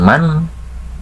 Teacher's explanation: makhraj Nun itu asalnya dari ujung lidah pindah ke kisum ke Pangkal hidung karena akan menghasilkan guna karena